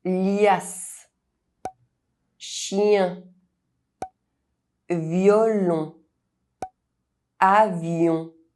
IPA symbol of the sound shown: j